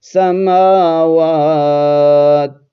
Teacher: جب تا کے اوپر وقف کریں گے تو پھر یہ دو زیر نہیں پڑھیں گے، اس کو ساکن پڑھیں گے